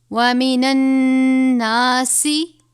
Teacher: یہاں پر نون مشدد ہے، غنہ کریں گے.